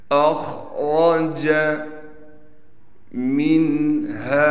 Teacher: اخرج منہا، نون پر غنہ نہیں کرنا، ہا کے بعد الف ہونے کی وجہ سے، الف حروف مدہ میں سے ہے لہٰذا ہا کو ایک الف کی مقدار کھینچ کر پڑھیں گے